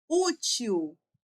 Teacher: Útil tem som de U. Então, o L tem som de U.